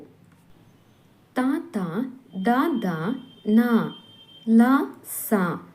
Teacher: ಅಕ್ಷರಗಳು ಹಲ್ಲುಗಳ ಸಹಾಯದಿಂದ ಹುಟ್ಟುತ್ತವಾದ್ದರಿಂದ ಇವು ದಂತ್ಯ ವರ್ಣಗಳೆನಿಸುವವು